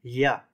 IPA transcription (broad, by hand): ʎ